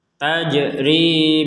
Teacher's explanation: ada jim sukun dipantulkan.